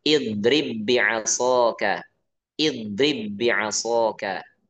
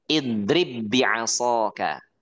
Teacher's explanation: jadi ba yang pertama kita masukkan ke ba yang kedua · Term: idgham